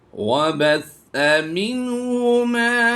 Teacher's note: सीन की सीटी नहीं आनी चाहिए, बल्कि सा नरमी से अदा होता है।